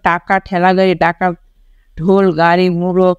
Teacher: ব্যঞ্জন ধ্বনি উচ্চারণের সময় জিভের ডগা মূর্ধার সঙ্গে লেগে বায়ুপথে বাধার সৃষ্টি করে সেগুলোকে মূর্ধন্য ব্যঞ্জন বলে।